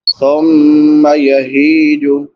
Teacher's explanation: یخرج به زرعا مختلفا الوانه، فا پہ نون تنوین ہے، بعد میں حروف حلقی میں سے حمزہ ہے تو یہاں پہ اظہار ہوگا۔ ثم یہیج، ہا کے بعد یا مدہ ہے، یا ساکن ما قبل کسرہ یعنی زیر ہے، اس کو ایک الف برابر لمبا کریں گے